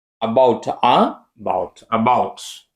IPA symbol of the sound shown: ə